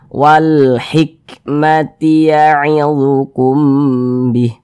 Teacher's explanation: Maka huruf lamnya dibaca izhar. Terbaca dia dengan jelas. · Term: alif lam qamariyah